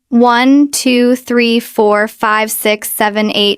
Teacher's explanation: you get that croaky voice at the end of it. It's called vocal fry.